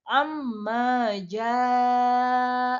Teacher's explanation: Cara membacanya adalah dibaca 4-5 harokat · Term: mad wajib muttasil